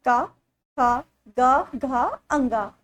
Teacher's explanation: जो का वर्ग का उच्चारण स्थान है वो होता है कंठ से, मतलब का वर्ग के जितने भी ये 5 वर्ड हैं इन सबका आप जो बोलेंगे तो ये कंठ से इनका उच्चारण होता है, का, खा, ग, घा, अंगा।